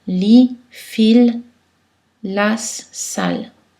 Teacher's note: il faut faire attention à bien positionner sa langue contre les alvéoles, c'est-à-dire un peu plus en avant qu'en anglais. Essayez de juste toucher l'arrière des dents.